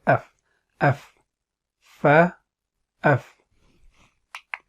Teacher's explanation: Fa, the inside of the lower lip and the tips of the upper incisors.